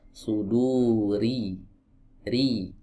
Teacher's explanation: huruf ro di sini dalam keadaan kasrah berarti dia harus dibaca tipis.